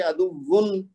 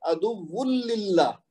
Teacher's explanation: اسی طرح اگلا کیا ہے عدو للہ، اب یہ دیکھیے نا واو کے اوپر جو 2 پیش ہیں، ویسے اگر ہم الگ پڑھیں تو یہ پڑھیں گے عدوون، نون کی آواز پیدا ہو رہی ہے نا، لیکن للہ کے ساتھ جب ہم ملائیں گے تو ہم پڑھیں گے عدوون للہ، وہ نون کی آواز غائب ہو جائے گی